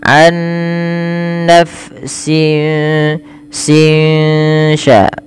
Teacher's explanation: suara nunnya disamarkan kepada huruf setelahnya sehingga ya dia membaca antara izhar dengan idgham, yaitu tidak dimasukkan dan tidak diperjelas tapi di antara kedua-duanya. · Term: ikhfa hakiki